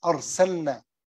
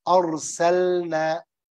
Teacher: this lam إظهار make it clear